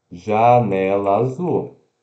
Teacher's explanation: a gente não dá essa pausinha no meio das palavras janela Azul a gente fala janela Azul a gente junta tudo · Desculpa, a gente não fala janela azul. A gente não dá essa pausinha no meio das palavras. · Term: a gente junta os sons